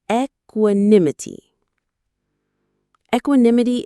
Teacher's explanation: The stress is on that third syllable. Nim. Equinimity.